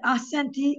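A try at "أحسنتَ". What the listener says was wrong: Tabii müzekker olunca ahsente diyorsun. Ama hareket edilmesi ahsent diye kalırsın. Ahsente. Muhatapsın ya. Ahsente.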